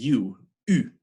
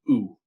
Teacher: But U is a very distinct, tight ooh sound. Your lips are tight. Ooh. It's kind of coming, you're forcing the air up through a constricted throat and through that constricted set of rounded lips.